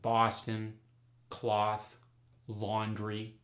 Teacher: the aw sound goes to the ah sound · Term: Boston dialect